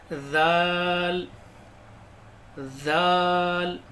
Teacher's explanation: जबान की नोक को ऊपर के दांतों पर लगानी है · جال نہیں پڑھنا ہے، اس کو زال پڑھنا ہے. زبان کی نوک کو اوپر کے دانتوں پر لگانی ہے.